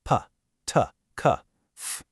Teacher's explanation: These demand greater muscular energy and a much stronger stream of breath because of all that air rushing through. They are generally voiceless. Your vocal cords do not vibrate. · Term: fortis consonants